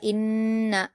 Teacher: نون پر تشدید ہے تو غنہ کے ساتھ پڑھا جائے گا